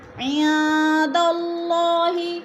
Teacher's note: عن میں اخفا ہو رہا ہے، نون ساکن کے بعد دال آ گیا تو ادھر اخفا ہے، اللہ پر پڑھا جائے گا، اللہ سے پہلے لفظ دال کے اوپر زبر ہے تو اللہ کو پر کر کے پڑھیں گے۔